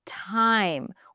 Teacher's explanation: a T in the beginning of a word is pronounced as time with that little H right after